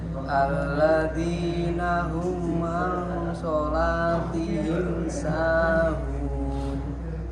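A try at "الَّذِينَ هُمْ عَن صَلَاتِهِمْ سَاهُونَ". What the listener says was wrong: Itu kurang panjang, Pak. Kurang panjang.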